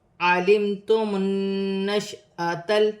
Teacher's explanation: نون مشدد میں غنہ کیا جائے گا اور الف پر زبر کی حرکت ہے، الف کو حمزہ پڑھا جائے گا.